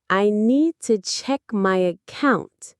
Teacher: Notice how to becomes t and account starts with a schwa, account, account.